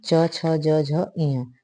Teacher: इया का उच्चारण स्थान क्या है, क्या है, च छ ज झ इया, यानी तालु भी है और नासिका भी है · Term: नासिका के साथ तालु